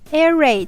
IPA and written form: ˈer ˌreɪd (air-raid)